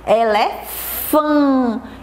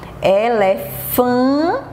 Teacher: E aí eu vou escrever novamente uma vogal seguida do N, porque novamente tem o sonzinho, ó, fechado, o sonzinho nasal, tá bom? Como se a gente estivesse apertando o nariz.